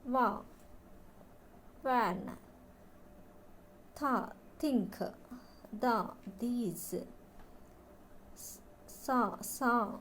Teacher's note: made by squeezing air through a small gap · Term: fricatives